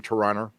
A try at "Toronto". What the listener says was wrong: Toronto. You just don't pronounce the last T.